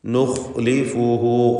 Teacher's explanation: ഖാഇന് തഫ്ഖീം കൊടുക്കുക, തടിപ്പിച്ച് ശബ്ദഭാരത്തോടെ ഉച്ചരിക്കുക.